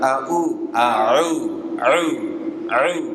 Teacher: ditenggorokkan bagian tengah tidak masuk ke rongga hidung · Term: huruf Ain